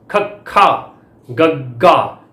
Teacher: ਇਹਨਾਂ ਦੇ ਉਚਾਰਨ ਸਮੇਂ ਜੀਭ ਦਾ ਪਿਛਲਾ ਪਾਸਾ ਕੋਮਲ ਤਾਲੂ ਨਾਲ ਸਪਰਸ਼ ਕਰਕੇ ਸਾਹ ਦੀ ਹਵਾ ਨੂੰ ਰੋਕ ਪਾਉਂਦਾ ਹੈ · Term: ਕੰਠੀ ਧੁਨੀਆਂ